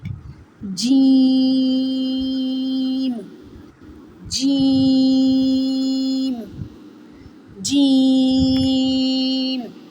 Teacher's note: Jim comes the center of the tongue touches the upper hard palate. Jim, Jim, Jim.